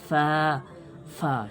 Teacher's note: সামনের দুটো দাঁতটাকে নিয়ে নিচের যে ঠোঁট রয়েছে সেখানে চাপ দিয়ে হাওয়া বের করে উচ্চারণটা করতে হবে। দুটো ঠোঁট মিলিয়ে ফা ফা হবে, এরকম না, দাঁত কামড়ে ঠোঁটের উপরে কামড় দিয়ে হাওয়া বাইর করেন।